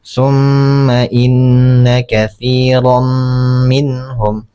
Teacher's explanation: cara membacanya tanwinnya dileburkan ke huruf mim. Jadi, tanwinnya sudah tidak terbaca jadi langsung masuk kepada huruf mim. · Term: idgham bighunah